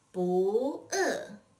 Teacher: when you combine the negative word 不 with another fourth tone word, 不 becomes the second tone